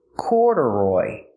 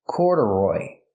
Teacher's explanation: So the second syllable is not stressed. It's pronounced relaxed.